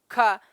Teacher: ख का जो है विवार, श्वास, अघोष और महाप्राण